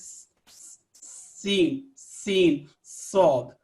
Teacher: سین اور صاد کی جو آواز ہے اس میں صفیر یعنی سیٹی کی سی آواز آتی ہے · زبان کی نوک جب نیچے کے دو دانتوں سے لگے تو سین اور صاد ادا ہوتا ہے. سین اور صاد.